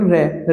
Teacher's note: इस प्रकार से आप अगला देखेंगे, कंपन जात या लुंठित प्रकंपित प्रकंपित। तो यह होता है केवल रे व्यंजन जो होता है कंपन जात या लुंठित व्यंजन